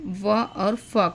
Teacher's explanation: दंतोष्ठ मतलब दात और ओठ दोनों से व और फ का उच्चारण होता है